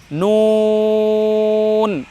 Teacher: আর নুন উচ্চারণ করার সময় ঠোঁট গোল হবে